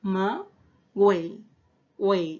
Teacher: la presencia de la diéresis sobre la U hace de que en Camagüey sí haya sonido de la U. Sí está presente ese sonido de la U. · se estaría dando lo que es un trictongo, porque tenemos vocal cerrada, más vocal abierta, más vocal cerrada.